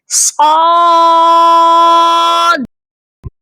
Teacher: ہم نے اس کو 5 الف کے برابر لمبا بھی کرنا ہے اور لاسٹ میں جو دال ہے اس پر آپ کی آواز تھوڑا باؤنس ہونی چاہیے، یعنی آپ نے زبان کو دال کے مخرج پر لگا کر فوراً ہٹا لینا ہے۔